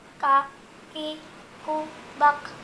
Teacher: pangkal lidah bertemu dengan langit-langit lunak dan keras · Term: huruf Kaf